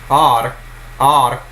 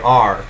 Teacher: then you are actually making a vowel plus a consonant but when you just say R you're just adding what's called coloring to the vowel